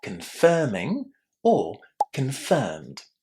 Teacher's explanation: So we're going to say confirming or confirmed. Also, pay attention that in this word there is a lot of stress on the second syllable.